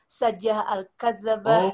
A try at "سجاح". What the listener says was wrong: سجاح. نعم أنا سمعت سجا سين جيم ألف فقط.